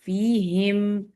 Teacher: فی تھن کریں، کسرہ کو جتنی باریک کر سکتے ہیں